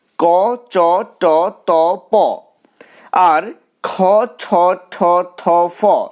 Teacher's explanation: প আর খ ছ ঠ থ ফ এগুলো অঘোষ ধ্বনি কারণ এই ধ্বনিগুলো উচ্চারণের সময় সুরের গাম্ভীর্য লক্ষ্য করা যায় না সুর গম্ভীর হয়ে যায় না